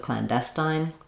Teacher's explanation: It's not going to be strongly aspirated, not clandestine, but clandestine. It's just an unaspirated T there.